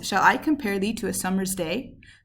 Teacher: each foot consists of two syllables the first unstressed the second stressed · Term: iambic pentameter